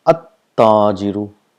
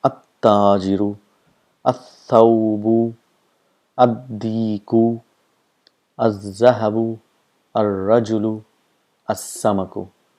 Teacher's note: the sound of lam is not produced, and the letter next to it gets a shadda. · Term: huruf shams